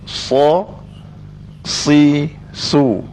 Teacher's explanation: huruf sad tidak berkaitan dengan mucung mulut dia tidak mucung mulut